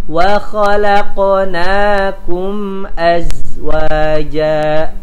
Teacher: huruf za tadi ya dia hanya mengeluarkan suara tanpa mengeluarkan nafas